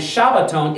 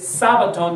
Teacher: So it's translated Sabbaton because in Greek they don't have the sh sound in Greek. So they're left with an S. And Shabbaton is a direct transplant from Hebrew into the Greek and neutering it with the letter sheen becoming the S sound.